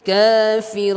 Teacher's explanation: ra di sini adalah tafkhim karena dia harakatnya dhammah. Run dengan cara memanyungkan bibir kita.